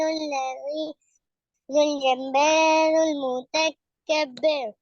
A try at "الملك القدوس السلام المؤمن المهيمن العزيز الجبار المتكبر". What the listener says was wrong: جی دیکھیں یہاں پہ جو الملک القدوس السلام یہاں پہ سب میں جگہ ملانا ہے، رکنا نہیں ہے کہیں بھی. الملك القدوس السلام المؤمن المهيمن العزيز الجبار المتكبر.